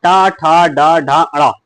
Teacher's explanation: टा वर्ग जो होता है वो आपका मूर्धन्य से हो जाता है।